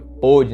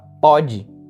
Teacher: Quando você utiliza acento circunflexo na letra O, veja que a pronúncia fica mais fechada, fica pôde, né?